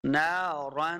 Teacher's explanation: نون کے آگے الف ہے، اس کو 2 حرکات لمبا کرنا ہے